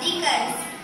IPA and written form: ˈdɪkɪnz (Dickens)